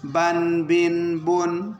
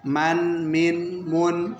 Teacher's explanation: ہونٹوں پہ ہے، لیکن با تار حصے سے اور میم خشک سے